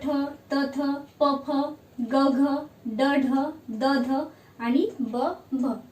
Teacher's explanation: हवा आधी पकडून ठेवतो आणि नंतर ती सोडतो म्हणून स्फोट झाल्यासारखं आपल्याला वाटतं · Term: स्फोटक